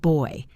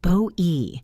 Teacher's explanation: It moves from O to E. Bo E. Make sure you finish the movement.